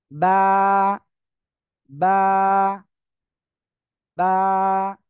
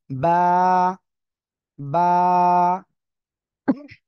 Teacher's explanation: দুই ঠোঁট কি ভিজা অংশ ভিতরের দিকে একটা অংশ রয়েছে ওই জায়গা থেকে উচ্চারণ হয় এই বা অক্ষরটা